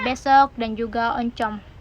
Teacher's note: vokal O besar atau tertutup seperti pada kata besok dan juga oncom